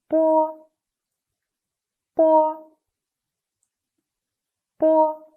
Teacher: Bo is an unaspirated bilabial plosive sound. When we pronounce it, long air is compressed by the closure of the lips. Then, the air escapes with a sudden release of the labial closure.